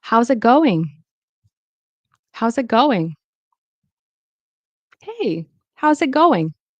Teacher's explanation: Notice I didn't really pronounce the T. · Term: glottal stop T